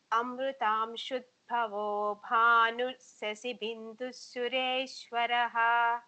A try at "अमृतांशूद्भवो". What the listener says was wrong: Shud should be long. Amritam, Shud. Ma'am, if you focus on every letter, then your chanting, obviously, initially it will be slow, but it will be clear. Say try to pronounce every letter. Amritam, Shud, Bhavo, Bhanush, Shashi, Bindus, Suresh, Varaha.